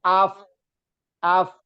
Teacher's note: Afnya bukan memantul tapi berdesis